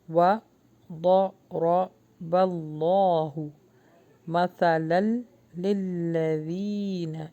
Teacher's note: جہاں پر اللہ کا نام آتا ہے اور اس سے پہلے زبر آ جاتا ہے، یعنی اس کو حرف جلالہ کہا جاتا ہے، وہاں پر ہم اللہ کے نام کو ہیوی کر کے پڑھیں گے۔ وَضَرَبَ اللَّهُ مَثَلًا لِلَّذِينَ، یا مدہ ہے لِلَّذِينَ، اور اللہ ایمان والوں کے لیے مثالیں بیان کرتا ہے۔